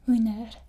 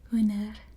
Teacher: So you don't say the D, it's like a silent D. And you roll the R a little bit.